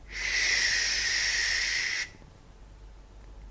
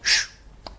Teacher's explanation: the sound is a fricative. So it can go on, it's a continuous sound. It can go on until the breath runs out or until we stop the sound. · In the sh sound, the tip and the blade of the tongue moves close to the back of the teeth ridge. It's not an alveolar sound.